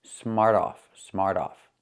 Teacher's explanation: When you say it together, the T changes to a fast D.